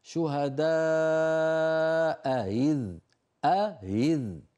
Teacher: فتجتمع في النطق همزتان متجاورتان من كلمتين. إذا كانت الأولى مفتوحة فإن ورشا رحمه الله يسهل الثانية، يسهل هكذا يقولها شهداء إذ أهذ.